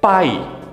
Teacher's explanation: eu tenho a consoante P, o núcleo da minha sílaba, que é o A, e o Y como semivogal